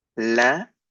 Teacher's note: This E in the middle is not pronounced.